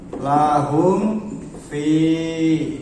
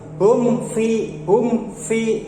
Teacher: Ini mim bertemu dengan huruf fa, kan jauh. Mim itu letaknya di ujung ya, di bibir, sedangkan fa itu kan di luar, keluar. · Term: izhar syafawi